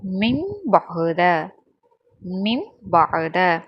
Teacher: அந்த நூனே சாக்கினையும் தன்வீனையும் மீமா மாற்றி ஓதணும். அதுவும் மீமா மாற்றி குன்னா செஞ்சு ஓதணும். குன்னா அப்படின்னா என்னென்னா மூக்கில் சத்தத்தை வாங்கி ஓதுவது தான் குன்னா அப்படின்னு சொல்லுவாங்க. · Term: இக்குலாப்